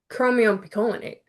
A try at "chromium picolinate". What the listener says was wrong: the reason you're getting stuck is you're not taking the beat between chromium picolinate.